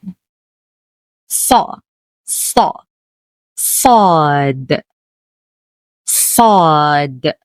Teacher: a heavy s sound produced with more pressure from the tongue making it deeper than the usual s in sun